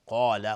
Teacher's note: قاف از حروف استعلاء غلیظ تلفظ میشه، الف هم تابع قاف غلیظ تلفظ میشه